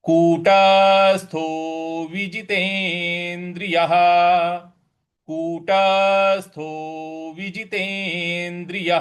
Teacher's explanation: कूटस्थो ट के ऊपर थोड़ा सा बल देना है हमें आघात देना कूटस्थो विजितेंद्रिय कूटस्थो विजितेंद्रिय य के आगे जो विसर्ग है उसमें · यहाँ कूटस्थो, ट के ऊपर थोड़ा सा बल देना है, हमें आघात देना है।